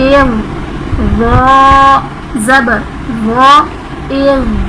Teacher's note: یہ حروف مستعلیہ ہے، اسے ہم نے پر کر کے پڑھنا ہے، نہ کہ باریک پڑھنا ہے